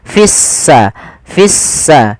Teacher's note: kita baca sehingga di sini lamnya ditandai dengan warna abu-abu artinya lamnya dianggap tidak ada sehingga langsung diidgamkan ke huruf Sin sehingga sinnya berharakat tasdid seakan-akan s-nya dua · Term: alif lam syamsiyah